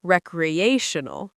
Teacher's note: Recreational emphasizes the third syllable